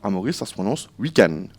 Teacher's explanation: à Maurice, ça se prononce weekend. On ne prononce pas le de final.